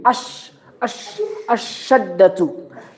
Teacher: Don't pronounce al. Don't pronounce. You go direct from a to shin.